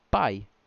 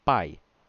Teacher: concorda comigo que o a tem um som muito mais forte do que o i o i é fraquinho o i é fraquinho aqui aqui então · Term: semivocal